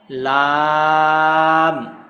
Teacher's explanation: জিহ্বার আগার কিনারা সামনের উপরে দাঁতের মাড়ির সঙ্গে লাগাইয়া